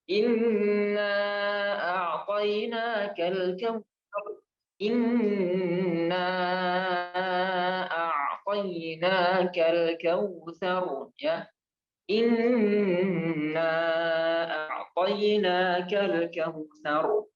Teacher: Nah, ini mad wajib mad jaiz munfasil. Panjangnya 2,5 alif atau 5 harakat.